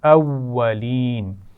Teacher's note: اولین واو پر شد ہے، واو پیچھے حمزہ سے بھی ملے گا اور آگے زبر کے ساتھ اپنی آواز بھی اس کی آئے گی